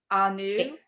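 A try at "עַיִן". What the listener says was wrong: Ain. That's a nun.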